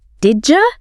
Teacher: The D and the Y sounds just melt together.